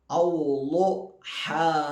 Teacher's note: ലോദിൻ്റെ മഖ്റജ് നാവിൻ്റെ സൈഡ് ഭാഗം, അതായത് നാവിപ്പോൾ ഇങ്ങനെയാണെങ്കിൽ ഈ സൈഡ് ഭാഗം മേലെ അണപ്പല്ലിൽ തട്ടിക്കാം, സൈഡിലുള്ള അണപ്പല്ല് തട്ടിക്കാം.